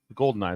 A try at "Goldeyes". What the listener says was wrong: There's no N. It's just Gold Eyes.